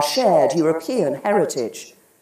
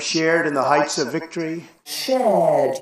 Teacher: In the words shared, hard, and work, most Brits will not pronounce the R sound, but most Americans will.